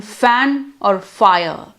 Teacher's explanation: the voiceless labiodental fricative is realized in a spelling like f as in fan or fire